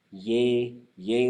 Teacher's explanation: you should be saying yey yay as a low tone